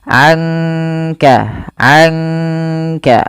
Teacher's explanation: dibaca samar-samar Dibaca dengan ada sedikit mendengungkannya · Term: Ikhfa Hakiki